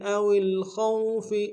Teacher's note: او الخوف میں خوف کو موٹا ادا کریں گے، واولین بغیر کھینچے پڑیں گے۔